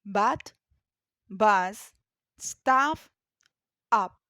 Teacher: this sound is produced with your mouth partially open your tongue is slow and between the middle and the back of your mouth this means it is made with the tongue mostly relaxed for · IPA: /ʌ/